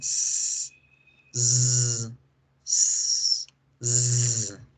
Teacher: La S y la Z son sonidos alveolares